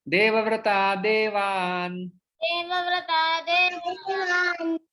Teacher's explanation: तो यहाँ पर विसर्ग का जो है वो लोप हो जाता है और शब्द बनता है देवव्रता देवान् देवव्रता देवान्। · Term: विसर्ग का लोप